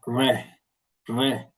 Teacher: Donc R se prononcer rouler à la pointe de la langue